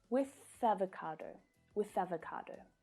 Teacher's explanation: the th sound can link to the following vowel sound